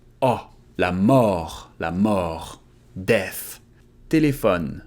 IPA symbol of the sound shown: ɔ